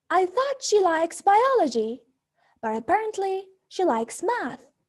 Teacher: Notice that in the first case, we use a rising intonation and place a stress on the two things we want to contrast